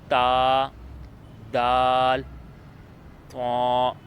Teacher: जुबान की नोक ऊपर के दांतों से लगे तो अदा होते हैं।